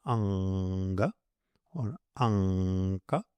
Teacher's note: The fifth letter, nga, is nasal. It is formed by using the nose too, not only the throat.